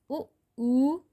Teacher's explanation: उ ओष्ठ से बोला जाता है।